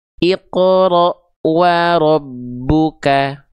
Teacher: ditekan sebagai penuntasan ba sukun yang awal baru keluar vokal domahnya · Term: idgham mutamilain